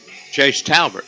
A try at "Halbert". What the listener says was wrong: Got an H in this one. Halbert. Halbert.